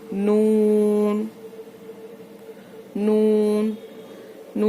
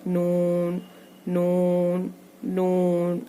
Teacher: सामने के ऊपर के एक नुकीले दांत से लेके दूसरे नुकीले दांत के मसूड़ों से लगाना है मसूड़ों को। फिर नून अदा होता है।